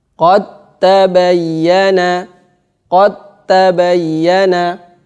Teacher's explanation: Huruf pertama ini dal ini wajib diidghamkan ke ta, dimasukkan ke ta. Maka caranya adalah sukunnya dihilangkan, kemudian tanya ditasdid.